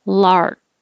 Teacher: i don't have to release that k